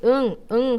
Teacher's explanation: 혀 뿌리가 어디에? 여린 입천장에 붙어 있어. 그래서 공기가 막혔다가 터져 나올 때 누구도 같이 나온다? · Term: 비음